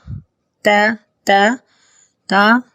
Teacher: تا کو بھی ہر حالت میں باریک پڑھنا ہے، زبر زیر پیش یا جزم ہو